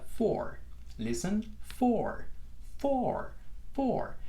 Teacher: Fíjense que es una O que estoy tratando de alargar. Nunca voy a llegar a ser una U como luce representada en la grafía de la palabra.